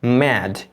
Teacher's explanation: দুটো ঠোঁটকে একসাথে লাগিয়ে এই এম সাউন্ডটিকে উচ্চারণ করবে এবং এটি একটি নেজাল সাউন্ড, এটি নাক দিয়ে তোমাকে উচ্চারণ করতে হবে